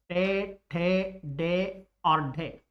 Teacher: ये चारों के चारों ही संघर्षी व्यंजन भी कहलाते हैं। इनका उच्चारण करने पर श्वास वायु अंग को स्पर्श करके बाहर निकलेगी तो स्पर्शी व्यंजन